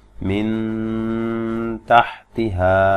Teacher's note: এখানে দেখুন নুন সাকিনের পরে তা আসছে, তা জিহ্বার আগা সামনে দাঁতের গোড়ার সাথে লাগায়া, তো গুণনাটাও ঠিক ওইখানে গিয়ে গুণনাটা করবেন, খুব স্বাভাবিকভাবে গুণনাটা হবে।